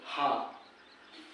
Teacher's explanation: हा का उच्चारण अगर आप करोगे तो बहुत सारी हवा निकलती है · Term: महाप्राण